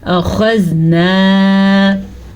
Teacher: ज़ाल नरमी से पढ़ेंगे, ज़ाल हमेशा ही नरमी से पढ़ा जाता है, जबकि नून के साथ अलिफ मद्दा है तो नून को खींच के पढ़ेंगे अलिफ मद्दा के साथ।